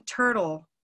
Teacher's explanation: So it's an unstressed vocalic or vowel-like L sound. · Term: dark L